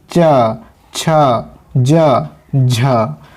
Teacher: स्पर्श का समय अधिक होता है और उच्चारण के बाद वाला भाग संघर्षी हो जाता है, वे स्पर्श संघर्षी कहलाते हैं।